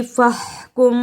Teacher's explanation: فحکم کی ہا کو حلق سے رگڑ کر نکالا